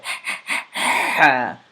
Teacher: of your throat very throw a little bit throaty letter and it is characterized by a deep sound from the throat